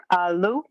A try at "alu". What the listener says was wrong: On the second one, hold the L just a little bit longer.